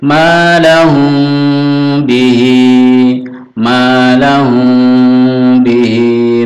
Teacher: mim sukun bertemu ba namanya Ikhfa Syafawi jadi samar bukan pertutup m mati lahum bihi tapi agak terbuka condong ke